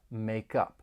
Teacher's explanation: We can link the final consonant sound in make with the beginning vowel sound in up